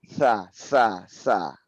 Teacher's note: Ya, huruf sa itu bukan sa, tapi dia lidah itu bertemu dengan gigi seri ya, gigi seri atas